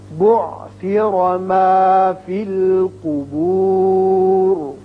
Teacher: جب وقف کریں گے را ساکن ہو جائے گا تو چونکہ پیچھے پیش ہے لہذا یہاں اس کو پر پڑھیں گے